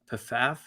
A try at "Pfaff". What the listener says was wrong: I think the P is silent. Pfaff.